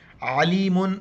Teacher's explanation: عین کو گلے سیدھا کرنا ہے اور لام کو یا کے ساتھ ملانا ہے